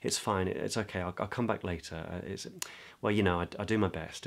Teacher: But it's not terribly expressive. I'm not using a lot of pitch. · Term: embarrassment and self-consciousness